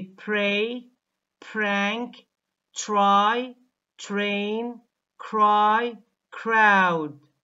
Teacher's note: when ra is produced after pa, ta, or ka, it loses some of its voicing.